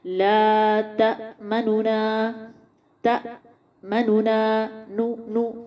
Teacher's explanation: दो नून पढ़े जाएंगे, लेकिन पहले नून की जो पेश है उसको पूरा नहीं पढ़ेंगे, बल्कि 1/3 अदा करेंगे। और अदायगी कैसे होगी, ला तमन्ना, तमन्ना, नू नू, ये जल्दी पढ़ देंगे।